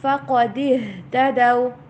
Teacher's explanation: قاف کو پر پڑھیے، ہا کی آواز کلیئر